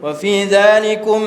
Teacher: wa fi dzalikum kena renggang sedikit sebab ikhfa syafawi